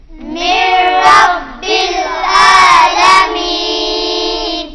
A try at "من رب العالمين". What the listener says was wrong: یہاں پر نون کی آواز نہیں آئے گی ، یہاں پر نون کی آواز نہیں آئے گی، میم اور را کے ساتھ مل جائے گا، من رب العالمین۔ فیہ من رب العالمین۔ فیہ من رب العالمین۔